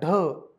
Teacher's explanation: ड मधेच जर तुम्ही ह मिसळला तर काय होतो ढ होतो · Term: महाप्राण